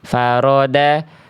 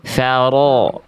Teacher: Ro ketika berharokat fathah itu harus dibaca tebal, berarti angkat pangkal lidahnya